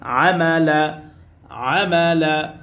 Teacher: জবরের পরে খালি আলিফ মাদের হরফ এক আলিফ টান হবে মাদ্দে তবাই